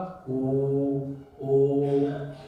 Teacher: आप कंठ का भी उपयोग हो रहा है, ओष्ठ का भी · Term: कंठोष्ठ